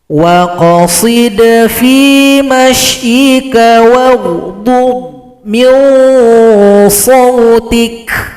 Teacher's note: ada huruf dhad, jangan dipantulkan seperti qalqalah karena dhad tidak masuk huruf qalqalah. Kemudian di sini perhatikan lagi huruf qalqalah itu huruf dal dan huruf qaf itu baru dipantulkan.